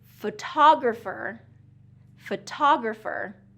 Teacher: Photographer is going to be second syllable stress.